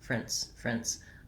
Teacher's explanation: i'm very short and reduced on the second syllable prince friends i almost go right from that r into an n with no vowel at all · my clear vowel is on the first syllable, and then I'm very short and reduced on the second syllable